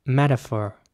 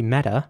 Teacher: American English it would be more like metaphor so the t is very soft it's almost like a d